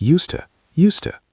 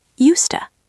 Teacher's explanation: when we speak quickly and naturally the d disappears